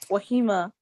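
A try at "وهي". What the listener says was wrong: No. Wahima is a ya. There's no ya after the ha. Read it good.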